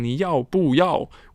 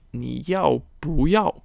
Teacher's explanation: we changed the tone of the 不 because there is a 4th tone coming after it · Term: 2nd tone